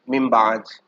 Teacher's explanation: اگر نون ساکن کے بعد حروف با آ جائے تو نون ساکن اور تنوین کو ہم میم سے بدل کر، ٹھیک ہے نا، ہم اس کو پھر غنہ کریں گے، غنہ کے ساتھ پڑھیں گے